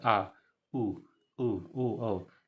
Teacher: जैसे जीभ के पीछे वाले भाग यानी कंठ के आसपास से ये निकल रहा है, इसलिए इसको पश्च स्वर कहा जाता है।